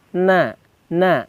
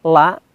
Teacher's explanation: pangkal ujung lidah kita nempel di dekat ujung langit-langit lebih depan daripada huruf la